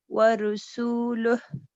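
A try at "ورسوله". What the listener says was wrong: جی زبر ہے نا، آپ نے زبر را اوپن ماؤتھ، ناٹ گول نہیں کرنا. ٹھیک ہے، زبر کو کرنا ہے آپ نے، پیش نہیں، معنی بدل جاتے ہیں.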